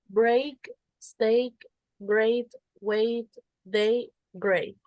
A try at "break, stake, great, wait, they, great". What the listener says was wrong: Very good. Very good.